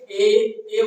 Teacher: इसमें कंठ और तालु का जो है सहारा लिया गया होगा। आप बोल के देखिए, ए बोलिएगा तो आपका जी थोड़ा सा तालु में जाकर सटेगा, ठीक है। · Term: कंठ तालव्य वर्ण